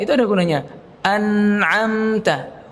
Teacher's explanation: nun makhrajnya adalah ujung lidah dengan langit-langit atas dan diiringi dengan dengung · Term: huruf nun